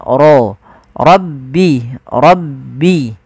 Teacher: lafal rabbi suara ro-nya ditebalkan